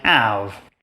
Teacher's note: French doesn't have that H sound at the beginning, but it's totally fine with a sound like V coming at the end of a word.